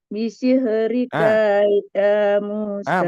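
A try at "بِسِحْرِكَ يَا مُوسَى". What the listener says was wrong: Masih panjang. Masih panjang. Harus rikaya. Rikaya. Jadi barusan masih bisihrika ya. Tuh kan ya, ka-nya kepanjang nih.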